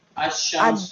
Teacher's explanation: دیکھیے لام کو شین میں ادغام کیا